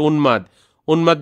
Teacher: 4 নাম্বারটা হচ্ছে যদি ন এর সাথে কখনো মফলা হয়, যেমন উন্মাদ, উদাহরণটা খেয়াল করো, এই যে উন্মাদ, উন্মাদ বললে আমরা এখানের মধ্যে দেখো উম্মাদ বলতেছি না